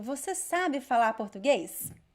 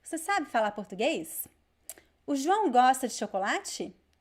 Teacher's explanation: Did you notice that when I ask a question, my intonation goes up at the end?